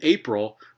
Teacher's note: cases so in april the second consonant is the sonorant and we find a p segment there a voiceless bilabial stop